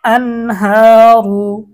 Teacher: এখানে এই যে হা হচ্ছে ইজহারের একটি হরফ। তো তো নুন সাকিনের পরে হা আসার কারণে গুন্না ছাড়া স্পষ্ট করতে হবে।